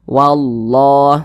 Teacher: ada huruf yang memiliki tanda baca fathah atau tanda baca damah maka lafaz Allahnya dibaca tafkhim dibaca tebal · maka lafaz Allahnya dibaca tabkhim, dibaca tebal.